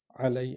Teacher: لس تا، تا کو ہلکا پڑھیں گے۔ علی عین جو ہے حرف ہلکی ہے، اس کو حلق سے نکالیں گے، اور لام اور یا کو اکٹھے پڑھیں گے کیونکہ یا پر جزم ہے۔